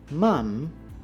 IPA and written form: mɑm (Mom)